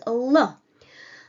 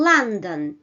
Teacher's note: usually uh the L corresponds to a dark variation which is L like in London again you simply press the